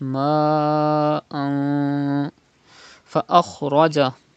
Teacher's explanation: You have to read like this: ma fa akhraja, pronounce kha with thicker voice and ra with thicker voice · fa is from ikhfa letters, so the rule ikhfa will be done, gunna will be done.